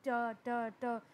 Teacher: इसी तरह अगर आप टी बोलें ट ट ट तो आपके वोकल कॉर्ड्स इतने नहीं हिलते, और इसको हम वॉइसलेस साउंड भी कह सकते हैं। इसका प्रॉपर नेम है वॉइसलेस डेंटल साउंड, क्योंकि जब आप बोलते हैं तो आपकी ज़बान जो है आपके ऊपर वाले दांतों से टकराती है।